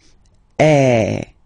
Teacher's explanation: So it's really open. I mean, the sound is really open, and normally your mouth should be opened a little bit more than with the accent aigu as well. Okay, so it goes like eh. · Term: accent grave